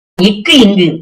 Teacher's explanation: முதல் எழுத்துக்கு நாக்குடைய முதல் பகுதி அன்னத்துடைய தொழுவதால் உருவாகுது